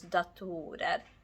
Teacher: stress jumped from the first syllable onto the second syllable